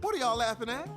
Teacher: Did you notice the stop T at the end of at?